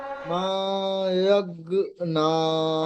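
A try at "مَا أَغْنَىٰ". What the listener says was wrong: ইয়াগ বলছেন, হামজা গইন জাবার আ, আ আক না, কি বলবেন? আরো টানেন, মাটা আরো টেনে পড়বেন আর গয়নটা পুর করবেন। আমি কেমন পড়ছি শুনে নেন। মা অগ অগ অগ অগ না, পড়েন।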